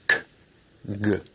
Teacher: Velar sounds are produced at the velum, or soft palate, such as k, g.